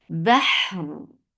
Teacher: And after giving rakhawa on ha, you are giving tawassut at the end.